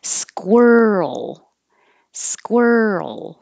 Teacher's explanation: tongue comes back for the r squirrel squirrel the Earl noise keep your voice going as you move from the r to the L to make the Earl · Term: earl sound